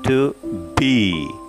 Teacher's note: To is unstressed and be is stressed. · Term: iamb